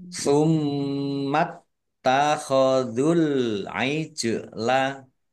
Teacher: mim tasdid bacaan gunnah atau mendengung ditahan biar tampak mendengungnya. Kemudian taknya dibaca double, ada tasdidnya, ditekan biar tampak doublenya.